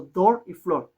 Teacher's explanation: algo como una o alargada